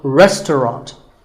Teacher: the second syllable is just ta and the third is rot so restaurant in british english you might hear just two syllables